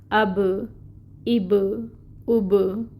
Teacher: जब बा हमने साकिन कर दिया ना तो फिर इसमें सिफ़्ते कलकला है, जो इंशाल्लाह हम अभी डिस्कस करेंगे। लेकिन ये बा जहाँ पे कलकला होता है वहाँ पे आवाज़ बाउंस होती है, पलटती है। तो आप देखें, अब ये आवाज़ पलटी, बाउंस हुई, ये है कलकला।